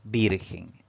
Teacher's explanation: es virgen si dividimos en sílabas pues tiene dos sílabas pero la mayor fuerza de voz al pronunciar esta palabra recae en la penúltima sílaba contando derecha izquierda por lo tanto es una palabra grave pero